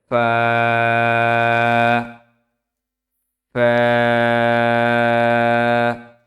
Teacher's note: নিচের ঠোঁটের পেট সামনের উপরের দুই দাঁতের আগার সঙ্গে লাগিয়ে উচ্চারিত হয়